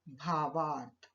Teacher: तो अ और अ मिलकर दीर्घ आ बन गया। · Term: दीर्घ संधि